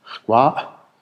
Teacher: das Apostroph am Ende ist ein totaler Verschlusslaut